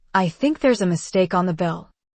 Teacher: The voice rises on mistake and falls on bill. That makes it sound like a question, not an accusation.